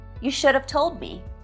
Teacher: Both should and have are weak here.